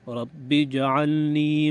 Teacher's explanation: رب جعلنی، اس کو رب جعلنی پڑھ لیتے ہیں، جیم پہ زبر پڑھ لیتے ہیں تو اس کو ٹھیک کرنا ہے. جیم کو ساکن پڑھنا ہے، ہاں جیم پہ قلقلہ ہوگا